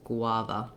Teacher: a says the ah vowel the second letter a says schwa so it sounds like gua with first syllable stress guava if you try find that gua combination hard to do · So we have first syllable stress, and this GU actually says the G and the W. And then we don't have any kind of vowel sound for the U.